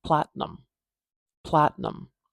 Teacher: I'm putting my tongue up behind my teeth like I'm going to say a true T, but I'm not doing the explosion. This is called a held T.